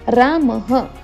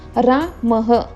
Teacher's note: विसर्ग जे आहे त्याचं उच्चारण ह म्हणून केलं जातं